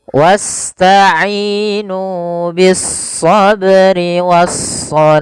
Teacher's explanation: pada lafal shah kita boleh membaca sepanjang dua harakat atau empat harakat atau pula enam harakat karena dia kita hukumi dengan mad arid lukun.